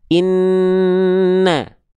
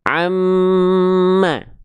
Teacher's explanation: Ketika tasdid dia tuh melipir dulu suaranya ke hidung. Misalnya nun nih n ini makhrajnya terus masuk hidung dulu n baru keluar vokal a-nya. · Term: dengung